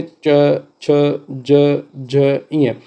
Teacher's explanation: तालु से निकलते हैं। मुंह के भीतर ऊपरी छत का पिछला भाग।